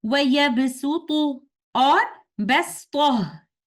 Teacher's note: we must pronounce letter Sin instead of letter Sad in the recitation of Hafs and Aasim tariqatu Shatibiya.